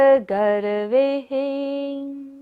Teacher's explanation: गर्वे पर विसर्ग है, सारी सांस का विसर्जन करना है।